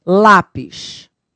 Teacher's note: paroxítona é aqui a penúltima sílaba e tônica